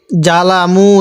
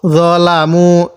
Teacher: জটা একটু নরম করে জবর জ পড়বো